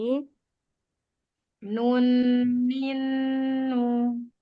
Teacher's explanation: Terasa ya ujung lidahnya kena ujung langit-langit atas.